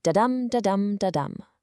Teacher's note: This is one unstressed syllable followed immediately by a stressed one. It's a soft-hard pattern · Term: iamb